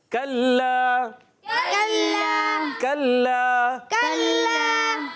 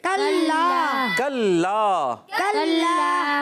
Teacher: कल्ला काफ ज़बर के साथ है, काफ पर ज़बर है, काफ ज़बान की जड़ और तालु की सख्ती से ज़्यादा होता है